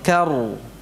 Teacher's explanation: Langsung tebal ya ra-nya, karu. Demikian juga ra dhammahnya tebal, ru.